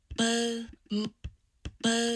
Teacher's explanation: in the vowel itself it sounds like that f zero is level pretty consistently